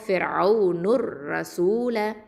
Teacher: அடுத்தது நூனில் தொம்மா இருக்குது, ஃபிர்அவுனுர் அப்படின்னு ஜாயின் ஆகிடும்